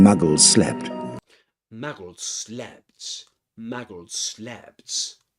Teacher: this is an example of regressive assimilation of voice